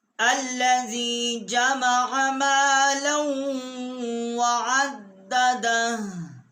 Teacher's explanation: और हम यहाँ आयत ख़त्म हो रही है, वक्फ करेंगे तो ये हा का मखरज आएगा, बाकी इसका पेश जो है वो नहीं पढ़ा जाएगा